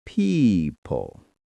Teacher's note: The word people has a soft p at the start and a long e sound. Stretch it gently.